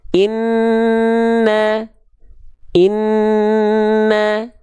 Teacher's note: ditahan dengungannya dua harakat hukum tajwidnya gunah